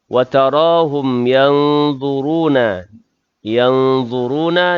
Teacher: nun mati bertemu dengan dha, adalah ikhfa' hakiki dengung sekadar 2 harakat